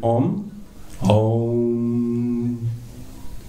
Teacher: Om is basically, it's interesting when we really chant Om from A, U, M, from the whole range, we're basically going through all the range of the sounds that our mouth can produce. A is the very guttural sound, it starts down in the throat, and M is the very tip of the mouth. If you then it's really, the sound comes from the front here.